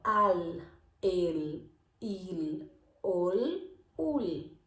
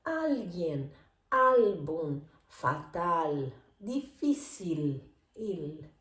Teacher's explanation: Cuando están al final de la sílaba en este sentido, digo al, el, il, ol, ul. La lengua se va detrás de los dientes.